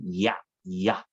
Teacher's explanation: 발음이 뭔가 두 개로 구분되지. 그렇게 바뀌는 걸 이중 모음이라고 얘기를 해요.